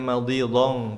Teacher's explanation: bukan hanya pakai eng tapi samar ke huruf dhodh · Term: ikhfanya